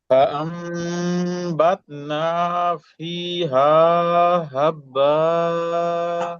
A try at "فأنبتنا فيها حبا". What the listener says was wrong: ভাই এটা হাটা একটু গলার মাঝখান থেকে হাব্বা ফিটা টান হবে হাটাও একটু টান হবে ফিহা বলেন